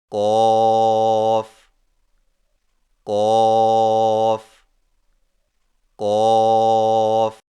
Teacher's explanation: قاف کی ادائیگی میں زبان کی جڑ کو کوے کے متصل تالو پر لگا کر موٹی آواز میں پڑھیں، یعنی قاف قاف قاف۔